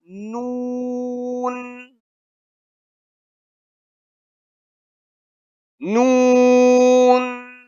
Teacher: نون کا حرف ناک سے نکالا جائے گا, ناک سے اس کی آواز آئے گی